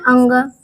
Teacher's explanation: नासिका से बोला जाता है, यानी उसका उच्चारण स्थान है नासिका।